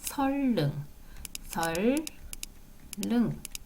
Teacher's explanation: 앞에 있는 니은이 리로 바뀝니다 그래서 선능이 아니라 선능 선능 이렇게 선능 선능 이렇게 발음 하셔야 · 서울에 있는 한 지역 마을 이름이에요. 선릉의 경우 앞자음 니은과 뒷자음 리을이 만나 니은이 리을로 바뀌는 유음화 현상이 나타나요